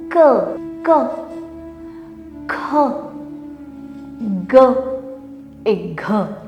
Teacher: Donc, dans notre partie vocale, vous allez voir dans le schéma aussi, la première ligne, les sons se prononcent du fond de la gorge. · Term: Kanthya